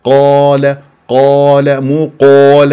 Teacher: ركزولي وتفخم الالف تبعا للقاف الف ساكن قبلها قاف مفتوح من الطبيعه لا لا مفخمه قال